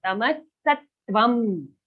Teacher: Sattvam, here in the anuswara, we have a ma sound, half ma.